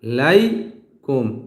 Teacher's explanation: দেখেন লামের উপর আমি কিন্তু এক আলিফ টান দিছি